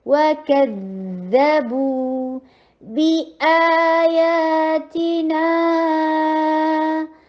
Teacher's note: رو کو ہیوی کیجیے، کسرہ آئے باریک، رو، وَكَذَّبُوا، اب دیکھیں ذال، پھر اس کو رخا ہوا کیجیے، نرمی کے ساتھ چلاتے چلے جائیے